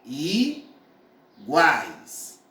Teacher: Veja que o A é falado totalmente pela boca. Então, é vogal oral.